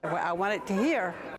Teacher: you can hear the glottal stop instead of a t